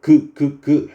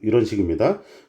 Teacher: 혀의 뒷부분이 윗 천장을 막은 상태에서 혀가 위에 입천장을 요런 식으로 막은 상태에서 발음을 막았다가 터트리면서 발음을 하거든요 그 그 이런 식입니다 그래서 이것을 보고 만든 것이 기억이에요 그다음에